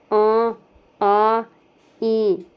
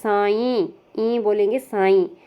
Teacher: इनके उच्चारण में हवा मुंह के साथ साथ नाक से भी निकलती है। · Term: अनुनासिक स्वर